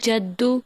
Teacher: دال پر سختی کرنی ہوگی مشدد کی وجہ سے